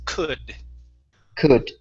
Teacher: Instead of cold, the L is silent. It's could.